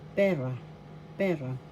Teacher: first syllable pe second syllable ra the accent is in the first syllable